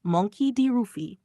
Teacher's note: Im Japanischen gibt es keinen natürlichen L-Laut, also wird L zu R. Das heißt, was wir als Luffy hören, ist eigentlich Rufy in der japanischen Phonetik.